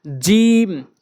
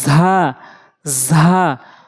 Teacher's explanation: জিম জিহ্বার মাঝখান উপরে তালুর সঙ্গে, আর যা হচ্ছে জিহ্বার আগা উপরে নিচে দুই দাঁতের আগার সঙ্গে।